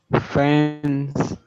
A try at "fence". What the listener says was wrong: Remember that you need to pronounce it with a Z, with a Z. You need to use your vocal cords and they produce a vibration or humming sound in the throat.